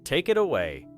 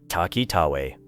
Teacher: The final sound of take joins it and the final sound of it joins away.